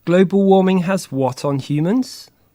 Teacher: Mark the rising intonation on the echo questions